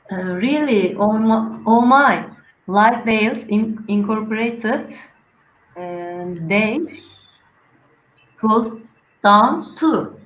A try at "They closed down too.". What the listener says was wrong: Okay. They closed down too. Very good.